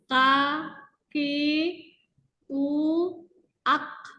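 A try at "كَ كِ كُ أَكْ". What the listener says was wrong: Jangan terlalu dalam ya. terlalu dalam nanti bunyinya ak. Tidak terlalu dalam ya. Ka, ki, ku, ak. Ya, ke depan sedikit. masih agak terlalu belakang ya. Hati-hati. Ka, ki, ku, ak. Tidak terlalu ke belakang. Huruf kaf, makrotnya. Karena dia pangkal lidah bagian bawah.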